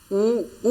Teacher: उ स्वर का उच्चारण ओठ से किया जाता है, इसलिए इसे ओष्ठ कहा जाता है।